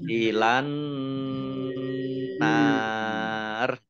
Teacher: Langsung masuk ke huruf berikutnya yaitu nun, ditandai nunnya ada tasdidnya. Nun tasdid dibaca mendengung, ditahan 2 harokat. Nun fathah alif mat tabi'i, tetapi karena bertemu dengan huruf terakhir yang dibaca sukun karena wakof, maka menjadi mat arid lis sukun.